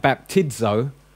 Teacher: Right, We missed that one in the middle, though, which is zeta, which is the Z in zebra. Okay, now if you find it in the middle of a word like baptizo, you pronounce it with a DZ. So if it's in the middle of a word, like after an iota, it's going to have a DZ, a Z sound.